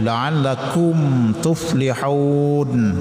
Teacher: Ini hukumnya idhar syafi'i. Mim mati bertemu dengan ta. Jadi mimnya dibaca terang tidak boleh tersembunyi atau samar tidak boleh.